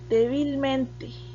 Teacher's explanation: tiene el acento en la cuarta posición